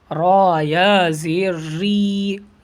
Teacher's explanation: را ایسے منہ کو گول کر کے پڑھتے ہیں